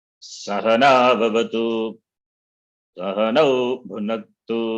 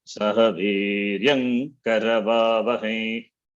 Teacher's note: So we have pitch, varying pitch, low, middle, high.